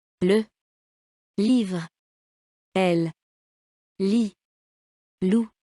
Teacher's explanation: Le, comme dans livre, oral et sonore. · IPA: [ l ]